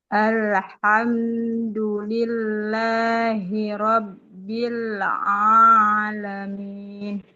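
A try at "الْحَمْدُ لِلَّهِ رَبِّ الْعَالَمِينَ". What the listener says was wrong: Oke, gitu Bu.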